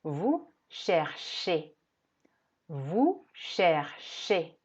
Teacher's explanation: La conjugación de vous se escribe EZ, pero solo pronunciamos la E. En este caso, vous cherchez.